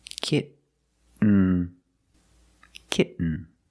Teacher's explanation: You don't release, and then you fall to an N, kitten. When you make the stop T, the tongue is up, almost in the N position, so you don't have to change much.